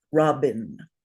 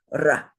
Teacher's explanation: this R is rolled a little not like an English R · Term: Sanskrit R